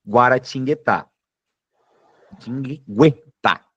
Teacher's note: acontecem duas semivogais, o U aqui em guá e o u aqui em gu. Então, duas sílabas, duas semivogais na letra e.